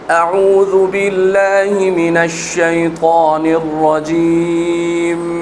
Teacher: سے پہلے کیا ہے یہاں حمزہ، حمزہ کے بعد ہے عین، عین گلے کے درمیان سے، وسط حلق سے ، ذال نرمی سے، ذال پر پیش، زو نہیں کریں گے